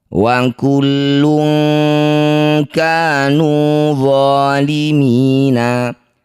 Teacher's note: Bunyi tanwin lun kita ganti jadi lung. Jadi dengungkan 2 harokat. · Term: ikhfa ab'ad